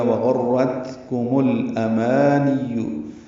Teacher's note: دیا گیا، وغرتکم الامانی، حمزہ اقصی حلق سے ادا کریں گے، ما الف مدہ ہے، دو حرکات لمبا کریں گے ، نون کو یا سے ملائیں گے، معروف طریقے سے جلدی